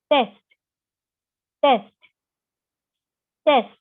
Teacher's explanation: Your tongue is touching the teeth ridge.